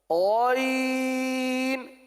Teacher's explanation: غین اور خا حلق کے اوپر والے حصے سے